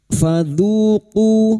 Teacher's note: dzu duma bertemu wawu sukun 2 harokat mad tabi'i